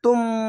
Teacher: না থামলে এটা তুন না বলে তুম, মিমের মতো উচ্চারণ হবে। এখানে ইকলাব গুন্না হতো।